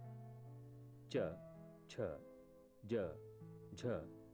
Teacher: च, छ, ज, झ ध्वनियां तालु से निकलती हैं।